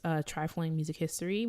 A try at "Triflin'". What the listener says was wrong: trifling with the G. Yeah, you said trifling music history.